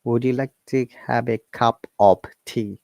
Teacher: Would you becomes would ya, and cup of becomes ob.